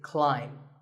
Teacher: the AI is an AI sound not an a sound so the word is climb